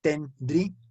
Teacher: lo que tenemos es un hiato, porque estamos separando la I de la A y estamos formando una sílaba más. Tenemos tres sílabas, tendría, ¿sí?